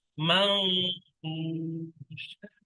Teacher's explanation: নুন সাকিনের পরে ফা এসছে হরফে ইকফার, ওই জন্য করে এই নুনটাকে অবশ্যই গুণনা করে পড়তে হবে।